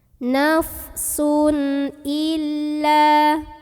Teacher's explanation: cara membunyikan tanwinnya masih dibunyikan dengan jelas an dan tidak usah ditahan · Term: idhar halqi